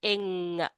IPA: ŋ